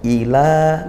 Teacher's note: Wa i hamzah dikuatkan ya, ila mat tabi'i baca panjang satu alif atau dua harokat